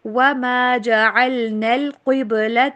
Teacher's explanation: قاف کو موٹا، با کے اوپر کلکلا کیجیے